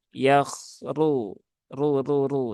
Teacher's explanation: rnya ini berbaris damah maka dia terbaca dengan tebal ya Ru bukan ru tetapi ru Yaku ru ru ru ya